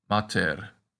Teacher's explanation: the long a in latin is pronounced like the ah in father